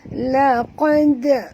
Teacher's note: lantunkan bunyi dal ni kerana dal ini mati qalqalah sughra ya